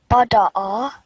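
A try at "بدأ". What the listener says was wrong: You are giving 1 second to each letter. First two letters, and on the last letter is getting bit longer. So just try to give equal time. 1 second. Bada'a.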